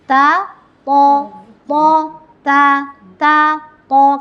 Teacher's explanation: Sama dengan sa dan so, ketika to ditebalkan, ketika ta ditebalkan jadilah to. Ta, to, ta, to, karena dia makhrajnya sama, cuman beda sifat ya gitu.